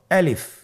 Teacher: আলিফ হরফটি মাখরাজ হলো আপনার মুখের শূন্যস্থান থেকে, গলা এবং মুখের শূন্যস্থান হতে আলিফ হরফটি উচ্চারিত হয়।